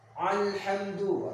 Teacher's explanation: Hamzah ini berbeda, dia makhrajnya di bawah tenggorokan yang bawah. Ya, berbeda ain di atasnya.